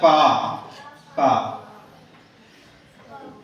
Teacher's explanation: पहला हर्फ है फा, है ना, फा। ऊपर के दांतों के किनारे और निचले होठ के तर हिस्से से अदा होता है। ये जो ऊपर के दांत है हमारे, ये किनारा और नीचे होठ का तर हिस्सा यानी गिले हिस्से से अदा होता है फा। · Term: शफवी मखारिज